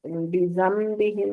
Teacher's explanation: नून साकिन के बाद बा आ रहा है, तो यहाँ पर हर्फ बदल जाएगा नून की बजाय मीम में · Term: इक़लाब